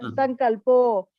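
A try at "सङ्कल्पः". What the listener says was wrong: That O we make it as ha. Nahya sanyasta sankalpaha.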